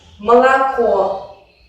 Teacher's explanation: Pero si una vocal está en la posición átona, entonces sí que sufre algunas modificaciones. O y A en la posición átona se pronuncian como una A muy breve y muy relajada.